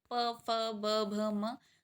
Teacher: प वर्ग में हो गए आपके प फ ब भ म जो है अनुनासिक है, और ये बोला गया है आपका ओष्ठ से, प फ ब भ म। होठ मिलेंगे तभी आप बोलेंगे।